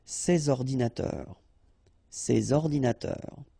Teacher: All right, and of course, les adjectifs démonstratifs, sorry, this or these, okay, and in that case, I took the plural form, so these here, and then ordinateur, computers, so you should make the liaison between S and O